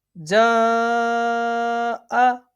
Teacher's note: مد متصل کو 2 2.5 الف کے برابر کھینچ کے پڑھا جائے گا. ٹھیک ہے، جیم الف زبر جا، حمزہ زبر آ، جا آ.